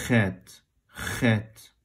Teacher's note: The airflow is impeded a bit, and it's not voiced, so your vocal glands won't vibrate, and it'll be Chet. · it's pronounced at the velum, and it's what they call a fricative. So the sound is impeded a bit.